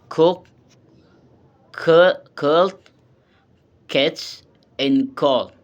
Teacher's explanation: K is voiceless, velar, and plosive. And the explanation, it is produced by blocking the back of the mouth with the tongue and quickly releasing air without vocal and vibration.